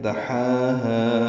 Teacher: دحاها ہا وسط حلق سے ادا کریں گے ، 2 حرکات لمبا کریں گے، اور ہا الف مدہ ہے،